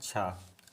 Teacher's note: तो स्पर्शी संघर्षी व्यंजन है छा